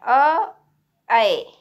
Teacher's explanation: ऐ में हमारा जो मुख विवर है वो अर्ध विवृत है और जीभ की स्थिति अग्र है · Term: मानस्वर ऐ